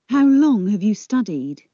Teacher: Long and studied are stressed. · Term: sentence stress